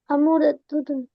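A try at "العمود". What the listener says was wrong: अमूदुन, अल लगाइए।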